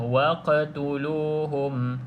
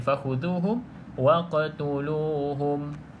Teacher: pastikan lantunkan sedikit pada huruf qaf. Jangan terlalu kuat pula. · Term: qalqalah